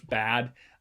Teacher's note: it has this nice clear peak in the middle based on the sonority of the low vowel